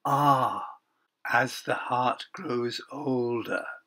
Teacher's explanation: So the sigh of ah is continued into heart. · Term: Assonance